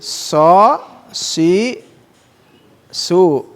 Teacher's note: ujung lidah ya hampir bertemu dengan gigi seri depan, tapi ke bawahnya ya agak ke bawah